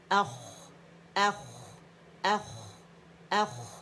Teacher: پھر خواہ ہے, اب خواہ جو ہے حرف مدہ کے بعد آ رہا ہے تو ہم نے 2 خواہ شو کرنے ہیں, پہلا سکون کے ساتھ, اس میں استعالہ ہے, موٹا ہے, ٹھیک ہے, تو اور دوسرا خواہ فتح کے ساتھ ہے, اور آگے ہمارے پاس آیت کا نشان آ رہا ہے.